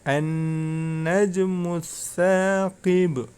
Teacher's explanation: Ya, di ayat yang ketiga yang perlu diperhatikan, yang pertama yaitu di situ ada nun tasydid ya, an-najmu ya. Apabila ada nun tasydid, maka cara membacanya ditahan ya, diperpanjang. Karena itu termasuk bacaan gunnah. · ada Nun tasjid maka cara membacanya ditahan ya diperpanjang